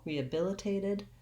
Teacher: it's stressed rehabilitated and then i have another relaxed vowel here a clear a vowel on the tape syllable rehabilitated that first t i say as a clear t i